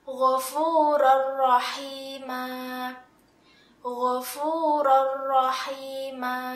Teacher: Nah, karena hukum bacaannya adalah idgham bila gunnah, maka fathah tanwin ini dimasukkan ke dalam huruf ra tetapi tidak disertai dengungan.